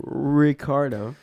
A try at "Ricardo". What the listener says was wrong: if you're gonna say in spanish you gotta roll yours